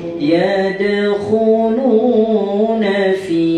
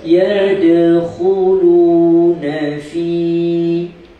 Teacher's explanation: Dia tak terputus ya, sebutan dia sambung terus.